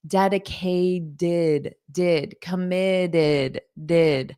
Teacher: You have that id for both of them. The final T is more of a soft D in American English.